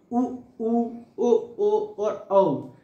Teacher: जैसे अपन वृत्तमुखी ओंठ से बोलेंगे तो उ बोलेंगे